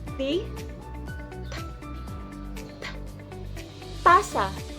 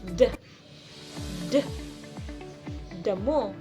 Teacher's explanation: Ang dulong dila ay dumidikit sa likod ng ngiping itaas. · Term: dental